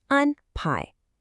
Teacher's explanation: You've got to remember, it's flat, then rising.